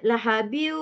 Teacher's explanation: Macam dia masukkan tanwin pertama ke dalam waw. Besertanya dengung lah. Dengung mesti 2 harakat minimum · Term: idgham ma'al gunnah